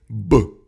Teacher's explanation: Чувствуете, как плотно смыкаются губы?